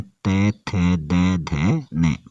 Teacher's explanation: फिर त वर्ग को बोलते हैं दंत स्पर्श व्यंजन।